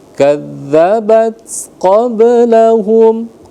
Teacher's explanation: ba qalqalah sugro. Jadi ringankan saja ya